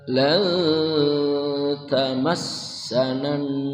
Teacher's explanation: Ikhfa nun mati bertemu ta, ujung lidah lurus ke depan.